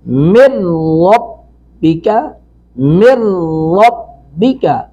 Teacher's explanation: تو یہاں پہ ادغام بلا غنہ ہوگا